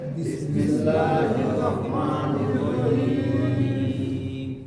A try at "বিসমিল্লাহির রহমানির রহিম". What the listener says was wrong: দেখেন বিসমিল্লাহ আমরা পড়ে আসছি, র র কিন্তু 18 রূপের এক হরফ। রাহিম বললে আকার হয়ে যাচ্ছে, আমরা একটু মোটা করে বলবো। হ্যাঁ, রহিম। বিসমিল্লাহির রহমানির রহিম।